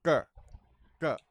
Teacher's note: My tongue is all the way back in the soft part. It's called the soft palate. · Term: D sound